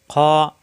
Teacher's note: খ কণ্ঠনালীর শেষ অংশ থেকে উচ্চারণ